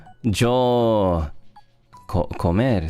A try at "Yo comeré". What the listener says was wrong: and E at the end with an accent.